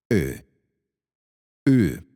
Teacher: you're trying to say A with your lips rounded